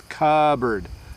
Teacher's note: So cupboard, we don't say the P. So you can just take in your mind, just don't worry about the P in cupboard.